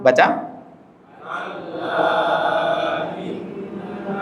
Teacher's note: Kalau munfasil pertemuannya beda kata. Madnya ada di akhir kata pertama, hamzahnya ada di awal kata kedua. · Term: mad munfasil